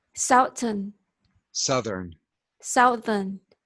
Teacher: we really change that vowel sound. It's almost just a plain U sound when we turn it from south to southern.